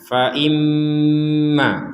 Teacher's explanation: di sini ada mim bertasdid kita dengungkan